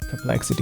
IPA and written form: pərˈplɛksɪti (perplexity)